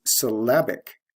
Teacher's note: notice the stress shift from first syllable to second syllable